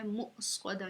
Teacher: یہ حمزہ ہے تو ہم نے اس کو جھٹکے سے پڑھنا ہے